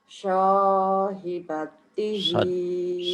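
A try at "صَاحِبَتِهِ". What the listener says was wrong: Sholat. Shotnya jangan anginnya jangan kebanyakan. Soto. Anginnya biasa aja. Sahibatihi.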